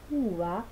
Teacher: Sin embargo, en la palabra uva aparece el alófono fricativo, que es el que se suele dar en posición intervocálica